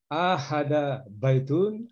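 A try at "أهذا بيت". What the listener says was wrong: Hanya nggak panjang, Pak. Ahadza baitun.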